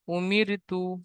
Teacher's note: র সাকিনের আগে জের এসেছে, তাই র কে বারিক করে পড়তে হবে